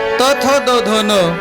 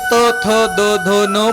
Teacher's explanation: या वर्णांना म्हणायचं दंत्य किंवा दाताचा स्पर्श झाला म्हणून दंत्य वर्ण आहेत